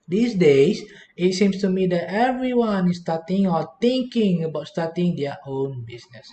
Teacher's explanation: At the end of the sentence, the tone will go down, all right, because the sentence is already completed. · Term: intonation